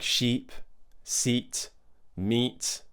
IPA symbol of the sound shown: iː